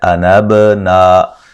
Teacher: انبنا، با پہ قلقلہ، نا الف مدہ ہے